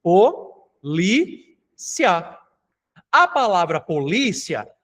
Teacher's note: A palavra polícia, li é a sílaba mais forte e ela termina em duas vogais que não se separam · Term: ditongo